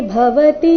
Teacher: ಭವತಿ ನಲ್ಲಿ ಎಲ್ಲ ಅಕ್ಷರಗಳು ರಸ್ವ, ಭ ಮಹಾಪ್ರಾಣ ರಸ್ವ.